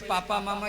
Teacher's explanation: पापा मामा बोलने में दोनों होठ लगना चाहिए इसमें दांत का जरूरत नहीं है इसमें जीव का भी जरूरत नहीं है सिर्फ दोनों होठ सटेगा